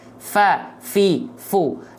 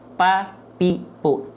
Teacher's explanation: P karena kalau huruf P dia enggak keluar nafas dia tapi kalau huruf Fa dia harus keluar nafas karena punya sifat namanya hams